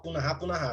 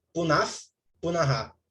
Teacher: essa visarga aqui, ela ganha um som de F. Então, você não fala punaha, punaha.